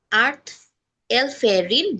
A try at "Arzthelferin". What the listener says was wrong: আর্টস, আর্টস, আর্টস্ট, লাস্টে আবার একটা টি আছে।